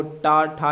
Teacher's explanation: तलु के अगले भाग से जो निकलता है वो टा ठा निकलता है